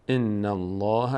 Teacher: لفظ جلاله پر خوانده میشه چون با قبلش فتحه داره ان الله لام فتحه دارد بعد از لام الف آمده این